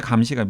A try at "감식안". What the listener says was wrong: 감식안이라고 발음하신 거죠? 감시관으로 들리게 발음을 하셨기에